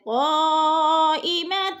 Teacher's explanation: مد متصل چار حرکات کے برابر ہم نے اس کو کھینچ کر پڑھنا ہے